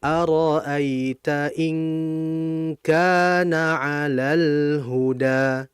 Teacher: Nah, ada ha. Maka lam mati kalau ketemu ha maka lamnya dibaca jelas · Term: izhar qamariyah